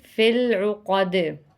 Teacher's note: حروف قلقلہ ہے، آواز پلٹ کے واپس آئے گی